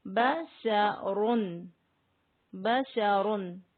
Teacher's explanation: جس راء پر دو پیش ہوں وہ راء پر موٹی پڑھی جائے گی